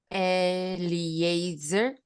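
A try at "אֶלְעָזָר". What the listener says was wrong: Yeah, that's the English way. El Azar.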